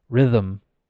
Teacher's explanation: I don't stop my vocal cords. Rhythm. This is something, if you have a better level, if you consider yourself to have like at any level, you should be saying a B1, B2, C1. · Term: vocalizing it